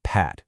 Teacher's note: You feel that little puff of air, but not much else, right?